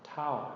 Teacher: That would be a short falling tone